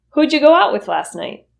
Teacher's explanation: Who did you will reduce to who'ja.